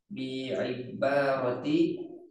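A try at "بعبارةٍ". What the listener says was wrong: Tanwin kan karena nggak ada alif lam ya bi ibaratin.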